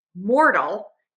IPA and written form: ˈmɔrtəl (MORTAL)